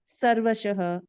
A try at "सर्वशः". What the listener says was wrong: இதுதான் மனுஷன், இதுதான் ஷ. அந்த ஷ இருக்கா? இல்ல, என்ன இருக்கு?